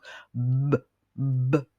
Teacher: Le son b fait des vibrations au niveau des cordes vocales parce que c'est un son que l'on dit voisé.